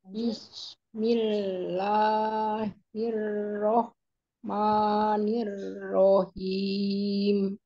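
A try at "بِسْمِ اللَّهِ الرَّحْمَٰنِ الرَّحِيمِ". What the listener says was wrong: Ar-Rahman enggak? Ar-Rahmanirrahim. Bismillahirrahmanirrahim. Ar-Rahman ya, bukan mon man, oke.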